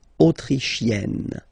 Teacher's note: You get E and then double N, you open the E.